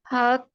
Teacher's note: हा की साउंड हलक के निचले हिस्से से आएगी, मतलब ऐसा फील होगा कि जैसे कि हमारी सांस अंदर की तरफ को जा रहा है